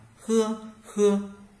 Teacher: chữ h thì cũng là âm gốc lưỡi nhưng mà luồng hơi đẩy ra nhẹ nhàng hơn